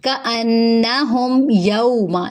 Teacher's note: میم ساکن کے فوراً بعد یا آ رہا ہے تو یہاں پہ ہم کیا کریں گے، اظہار کریں گے، ٹھیک ہے۔ میم ساکن کے بعد یا ہے، کأنہم یوم، یو پہ کیا ہے، واو لین ہے، میم کی حرکت لمبی نہیں ہوگی، اس کو یو نہیں پڑھیں گے، یو پڑھیں گے، ٹھیک ہے۔